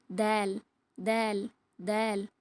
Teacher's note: இந்த எழுத்தை நம்ம மேல் பறக்களோட வேர்களை நாக்கின் நுனியால தொட்டு லேசா சொல்லணும்